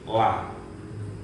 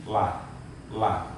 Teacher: Jadi yang betul itu ujung tepi lidah samping kanan atau kiri.